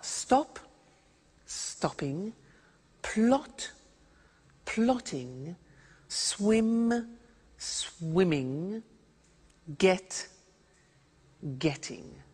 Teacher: when there is a double consonant we don't hear it in the pronunciation